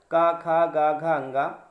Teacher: इस का वर्ग का जो उच्चारण होता है वो होता है कंठ से।